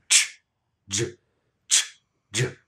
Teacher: So to review, English has two affricate sounds, ch and j, and they're made by combining the voiceless sounds t and sh, or the voice sound d and zh